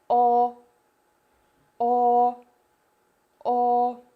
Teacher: The tongue is pushed back, the body of the tongue is located approximately in the middle of the oral cavity. We round our lips and try to pronounce sound O, O, O. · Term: O sound